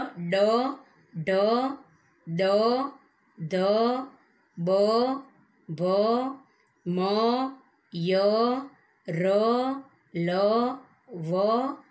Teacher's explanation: જે વ્યંજનોના ઉચ્ચારણમાં કોમળતાનો રણકો હોય તેને ઘોષ વ્યંજન કહે છે